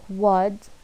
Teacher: And Wa, like wood and pot, short, high, back rounded vowel